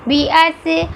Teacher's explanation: صاد کو گول پڑا جا رہا ہے